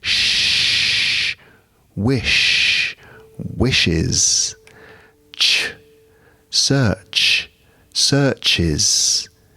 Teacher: These are busy sounds, sibilant, hissing.